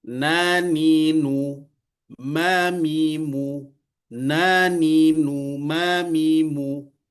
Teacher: Kemudian yang paling sedikit adalah nun dan mim yang berbaris. Ternyata ini juga ada ghunahnya.